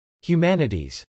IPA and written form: hjumˈænɪtiz (humanities)